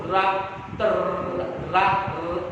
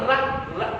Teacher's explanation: कंपन हो रहा है ना जीभ का अगले भाग में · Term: प्रकंपित वर्ण